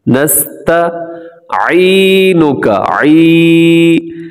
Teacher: کیونکہ عین کی ادائیگی مشکل ہے، تو ذرا سا اس پہ کوشش کرنی پڑتی ہے، محنت کرنی پڑتی ہے، حلق سے نکالنا ہے۔